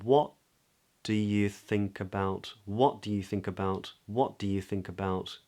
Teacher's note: we do stress the word what right because that what that's what indicates this being a question